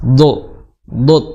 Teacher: huruf do makhrajnya adalah di pinggir lidah bertemu dengan gigi geraham atas